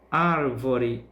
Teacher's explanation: ar é a sílaba que pronunciamos com mais intensidade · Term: sílaba tônica